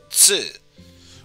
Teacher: And the second exception, instead of Tu, it's Tsu, which adds an extra S sound and pronounced with less of an emphasis on the T portion